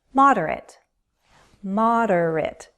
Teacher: 3 syllables, stress on the first.